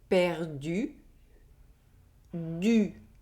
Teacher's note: The French U ([y]) is like pronouncing the sound [i] with your lips pursed and forward as you’re trying to blow a candle.